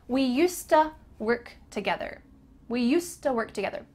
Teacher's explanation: Used to often gets reduced to usta.